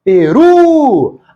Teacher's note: A palavra tem 2 sílabas e a mais forte é a última. É uma palavra oxítona.